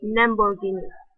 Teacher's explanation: one of the Chinese native speakers pronounced the l as n for most of the words. For instance, Lamborghini, the word Lamborghini, he pronounced Lamborghini.